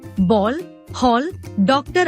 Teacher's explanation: जो आ और ओ के बीच की ध्वनि है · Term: आगत ध्वनि